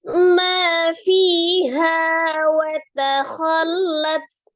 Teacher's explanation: Mad, ada alif sebelumnya fathah di huruf mim. Ma dibaca dua harakat.